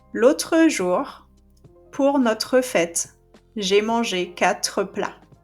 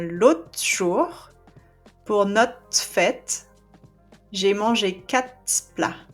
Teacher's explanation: here you don't hear the RE